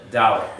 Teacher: We always lean on the first syllable.